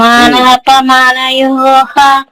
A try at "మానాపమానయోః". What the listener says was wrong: యోహ కాదు, యోహో. యోహో.